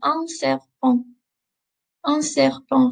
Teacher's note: just take note that I'm not pronouncing the T at the end. We've got that nasally sound again.